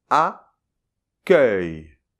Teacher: Attention, c’est un E ouvert, [œ], qui est suivi d’un [j], [œj]. Donc je répète : « ACCUEIL » [akœj].